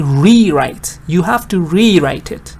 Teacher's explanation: I put the stress on re to actually emphasize the fact that has to be done again.